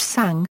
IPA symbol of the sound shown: sɑ̃